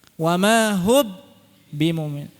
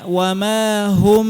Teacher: sifat gunnahnya tetap tersisa pada huruf mim, tapi posisi mulutnya dirapatkan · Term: ikhfa